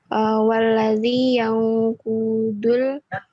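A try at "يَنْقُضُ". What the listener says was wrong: Kudu. Enggak usah di ikhfa. Ini bukan Al-Qur'an.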